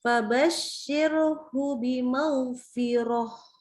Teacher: ini rohnya itu harus terdengar udaranya dengan telinga kita